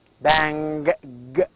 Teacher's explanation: bang is voiced because we can feel the vibration